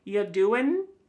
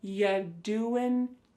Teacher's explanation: Listen to that g at the end. Y doing. It's gone.